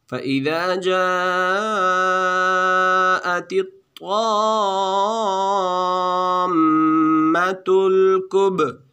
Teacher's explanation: کب با پر قلقلہ ہے